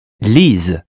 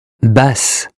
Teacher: A single S in French is pronounced Z, and a double S is pronounced S.